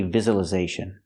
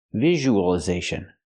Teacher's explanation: it's not the z sound like zebra, it's the zh sound like usual, visual.